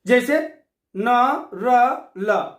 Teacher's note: जिन व्यंजनों के उच्चारण में जिह्वा ऊपरी मसूड़ों का वर्त्स का स्पर्श करती है वे वर्त्स व्यंजन कहलाते हैं।